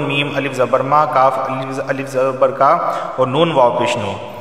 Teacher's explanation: تینوں کو ایک ایک الف کے برابر کھینچ کر پڑھا جائے گا کیونکہ تینوں مدہ ہیں، یہ الف مدہ، دونوں الف مدہ اور یہ واو مدہ۔